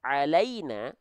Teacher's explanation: huruf lam ini termasuk ke dalam huruf yang muraqaqoh huruf yang tipis